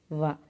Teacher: దంతములు పెదవుల నుండి పుట్టే అక్షరాలను దంతోష్టములు అంటారు